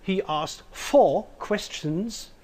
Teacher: the stress of four leads to an interpretation that he asked four questions and not five